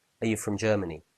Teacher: normally are in this question would be weak are you from Germany very quick very short but if you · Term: the weak form